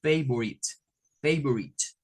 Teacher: no suena la E y suena esta I como una I corta